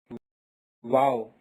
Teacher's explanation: comes out when both the lips don't touch completely. Wow comes out when both the lips don't touch completely.